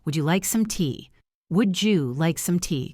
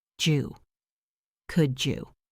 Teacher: Now let us look at the D plus Y combination, which makes a J sound.